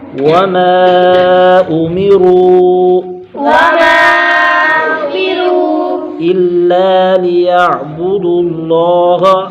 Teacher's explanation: وما میم پر مد منفصل، حرف مدہ کے بعد حمزہ دوسرے کلمے میں آیا، 2 2.5 4 الف تک کھینچ کر پڑھیں گے · الا لام پر الف مدہ ایک الف کھینچیں گے